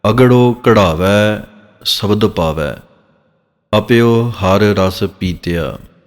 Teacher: ਜਿਹੜਾ ਘਗਾ ਹੈ ਇਹਨੂੰ ਘਾ ਦੀ ਆਵਾਜ ਦੇਣੀ ਹੈ ਹਿੰਦੀ ਵਾਲੀ